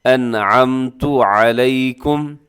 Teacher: یعنی کہ غنہ نہیں کرنا، تیزی سے پڑھنا ہے۔ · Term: اظہار حلقی